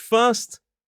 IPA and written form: fɜːst (first)